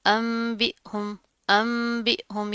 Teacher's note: नून साकिन के बाद क्या है, बा आ रहा है, तो उसकी आवाज़ को हम मीम से बदल कर पढ़ेंगे